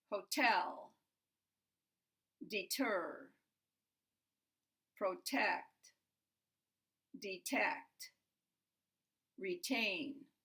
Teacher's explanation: I think you can hear there's stress on the second syllable not on the first and we pronounce the [t].